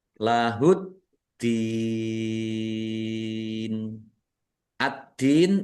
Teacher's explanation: alif lam syamsiyah karena tidak dibaca langsung masuk ke huruf berikutnya yaitu dal